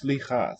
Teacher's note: No vowel in that first syllable. So starting with a consonant sound here.